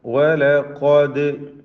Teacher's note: ഖാഫിന് തഫ്ഖീം കൊടുക്കണം. ഇസ്തിഅലാന്റെ അക്ഷരമാണ്, തഫ്ഖീം ചെയ്ത് ഉച്ചരിക്കണം. ദാലിന് ഖൽഖല സുഗ്റ നൽകുക.